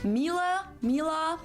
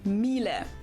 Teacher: it usually sounds more like an a in the end